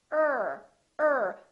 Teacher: the tip of the tongue curls and we pull it back ah ah so the tip of the tongue is not touching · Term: American R